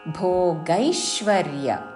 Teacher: భోగై గ ఐత్వముతో దాని మీద ఆఘాత భోగైశ్వర్య భోగైశ్వర్యగతిం ప్రతి చివరిలో తీ హ్రస్వము పొడిగించకూడదు.